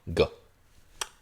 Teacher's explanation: It's a velar stop. So it's a voiced velar. So your tongue is all the way to the back, velar portion. It's that soft part in the back of your mouth.